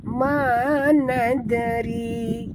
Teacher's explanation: Dal adalah huruf qalqalah, jadi kita kena lantunkan dia